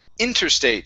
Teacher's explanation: the stress is at the very beginning of the word